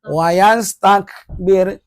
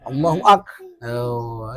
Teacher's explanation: Ingat kap mati ada suara hamesnya, ada anginnya tuh.